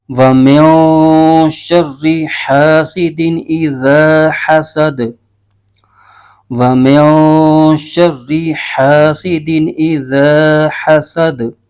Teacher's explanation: واو پر زبر ہے، بغیر کھینچے پڑھیں گے، میم کے نیچے زیر ہے اور آگے نون ساکن ہے، نون ساکن کو میم کے ساتھ ملائیں گے، نون ساکن کے آگے شین آ رہا ہے جو کہ حروف اخفا میں سے ہے